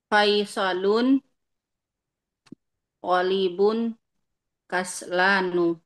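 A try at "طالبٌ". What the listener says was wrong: Oh panjang. Talibun. Panjang pendeknya perhatikan ya.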